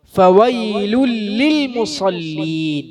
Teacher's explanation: ആ തെൻവീന് ശേഷമുള്ള ലാമിൽ ലയിച്ചപ്പോൾ അവിടെ ഒരു ശദ്ദ് വന്നു.